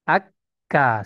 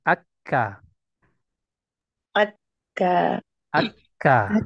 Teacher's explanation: bagian pangkal lidah itu terangkat ya menuju langit-langit atas ya yang keras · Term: huruf Kaf